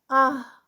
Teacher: جیسے یہاں پہ میں آپ کو کرتی ہوں کہ یہ دیکھیں، یہ ہم نے الف لگایا، حمزہ لگایا، اس کو زبر لگا دیں تو یہ حمزہ بن گیا، اس کو یہاں پہ اوپر سے یہ جزم دے دیں تو یہ یہاں پر بن گیا آہ، ٹھیک ہے۔ تو آہ میں آپ دیکھیں ہمس ہے، سانس آپ جو ہے وہ جاری رہے گی